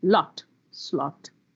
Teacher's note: that i need to open my mouth wide and say ah the second sound is oh for that i have to round my mouth